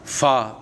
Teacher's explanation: ऊपर के दांतों के किनारे और निचले होंठ के तर हिस्सा से